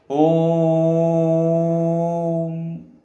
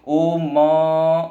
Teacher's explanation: अर्थात हलंत चिन्ह हमें यह बताता है कि उस अक्षर में से स्वर गायब है, अर्थात म को फिर झटके से बोलना है ओम। म के बाद फिर अ की ध्वनि सुनाई नहीं देगी